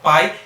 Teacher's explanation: A gente não vai ter mais ali uma única sílaba. Se a gente tiver ali tudo junto na mesma sílaba, o A vai ser a vogal e o I vai ser a semivogal.